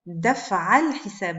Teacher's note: J'ai fait la liaison parce que la hamza de l'article, c'est bien une hamza qui est instable.